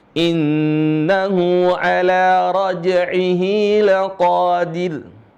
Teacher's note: Ra-nya dibaca tipis, laqadir. Ya, bukan dibaca laqadir. Laqadir. Karena jelas ini ra sukun, sebelumnya adalah kasrah.